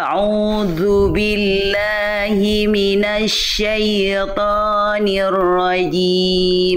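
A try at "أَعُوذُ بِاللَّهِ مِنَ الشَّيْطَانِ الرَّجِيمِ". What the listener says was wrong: tinggal tebalkan tebal tebaltebalkan Huruf tebal ya huruf tho dan rnya udah bagus cuman saya yakin Bunda bisa lebih tebal daripada itu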